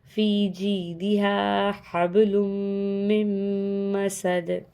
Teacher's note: تو ہم نے میم کو میم سے ملا دیا اور بن گیا ساؤنڈ میم مسد